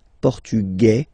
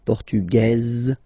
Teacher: Masculine, portugais, you don't pronounce the S. Feminine form, portugaise, you pronounce this z sound